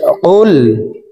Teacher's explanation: কফ লাম পেশ কুল। কফের মাখরাজ জিহ্বার গোড়া তার বরাবর উপরের তালুর সঙ্গে লাগাইয়া উচ্চারণ করে পড়তে হবে। তো এখানে দেখুন, লামের উপরে জজম আছে।